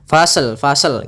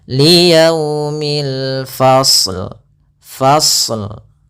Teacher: Hati-hati, tapi tetap dia menyempurnakan shadnya baru dimatikan lamnya